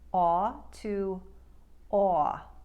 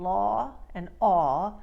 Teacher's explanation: The aw vowel sound, as in law and aw, will have a seemingly more narrow and a longer drawn out aw sound